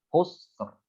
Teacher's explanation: Ro-nya tebal. Ro-nya sukun, sebelumnya adalah huruf sukun yaitu sin, sebelumnya lagi huruf yang dhammah. Ya, maka ini juga ro-nya dibaca tebal. Mengikuti fathah lah ya.